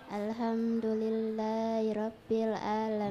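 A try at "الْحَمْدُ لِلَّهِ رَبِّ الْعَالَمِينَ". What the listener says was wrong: Jangan cepat, pelan, santai, slow. Ada tidak mat tabi'i kilmi di situ? Rumusnya diingat. Fathah bersamaan dengan alif, kasrah bersamaan dengan dhamma, dengan ya, dhamma bersamaan dengan waw. Alhamdulillahi rabbil alamin.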